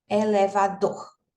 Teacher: a sílaba tônica a sílaba pronunciada com mais força é a última